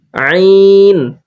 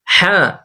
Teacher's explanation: আর যখন আইন ধরে পড়বো তখন একটু আওয়াজটাকে লম্বা করতে হবে আইন এটা তিন আলিফ হা এটা এক আলিফ কণ্ঠনালীর অর্থাৎ হালকের মাঝখানটা হালকা চিপে আমরা পড়বো আইন আইন তারপরে